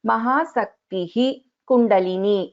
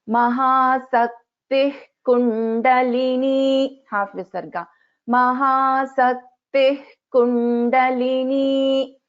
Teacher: So visarga followed by ka or kha. So in this case, we will not be chanting the complete visarga.